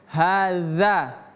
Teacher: Ha yang ini dzal bukan za bukan haza tapi hadza. Dza. Ingat ujung lidah ke gigi seri atas.